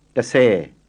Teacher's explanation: try and get an audible H after the S. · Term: aspirated S